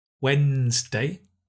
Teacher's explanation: Wednesday. We don't pronounce the D. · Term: silent letter